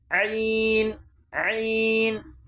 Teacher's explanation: عین، حلق سے نکالیں گے اس کو آ کی آواز میں